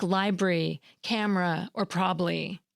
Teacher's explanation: syncope, which is when sounds or syllables are deleted from the middle of words